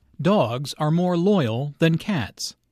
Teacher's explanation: The nouns and the adjective are content words here, so they are all emphasized.